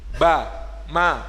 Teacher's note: makhrajnya masih satu tempat ba dan mim itu huruf syafatain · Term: huruf bibir